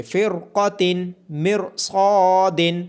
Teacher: یہاں را ساکن ہے اس کے بعد حروف مستعلیہ میں سے قاف ہے تو را کو موٹا پڑھیں گے